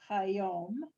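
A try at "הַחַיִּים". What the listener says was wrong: Almost. There's no dots over, so it's ha yim.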